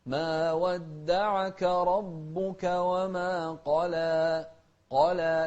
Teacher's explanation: شوف القاف مفخمة لكن اللام والألف بعدها مرققة